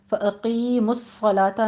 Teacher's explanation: قاف کو پر پتے ہوئے یاء مدہ ادا کریں گے، آگے صاد کے اوپر تشدید ہے، صاد میں سیٹی کی آواز بھی آنی چاہیے اور صاد کو پر بھی پڑھنا ہے